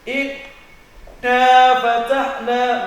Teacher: Kalau kita tutup hidungnya, inna fatahna, maka tidak akan keluar bunyi dari gunnah itu.